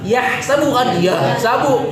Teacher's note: yahsabu pakai ha tengah tenggorokan. Yahsabu kan yahsabu, ya.